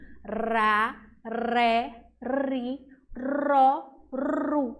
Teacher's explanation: Tá vendo que sua língua treme? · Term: som tremido